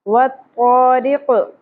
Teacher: اور قاف لہات میں سے ادا ہوگا یعنی کہ نرم تالوں میں سے